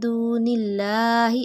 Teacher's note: اللہ سے پہلے حرف کے نیچے زیر آ گئی، اسی لیے اللہ باریک پڑا